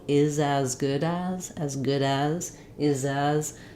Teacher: first of all um the letter the words is and as the letter s says the z sound so we want to make sure that we keep our voice on as we're linking